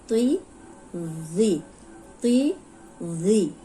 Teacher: ऊपर सामने के जो दो दांत हैं उनके किनारे पे जबान रख के बोलेंगे तो वो नरम भी निकलेगा और मोटा भी, और सीटी की आवाज नहीं आएगी।